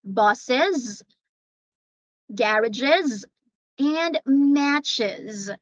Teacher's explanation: for this one we pronounce the plural forms with e and z